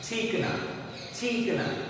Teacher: ई पर भार दिया गया है